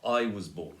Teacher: I would put the stress as I, stressed, was unstressed, and then born, stressed.